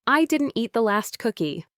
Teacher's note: Say it with a strong, firm tone, emphasizing didn't as if you're denying an accusation